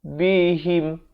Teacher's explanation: Inda rabbihim, bihim, bukan bihim, beza him dengan him. Ha berkasrah bunyi hi, bukannya bunyi he. Jadi bila bertemu mim jadi him, ya.